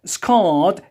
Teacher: when we delete R, yes, in British accent, which is followed by a consonant, yes, you have to pronounce it longer than usual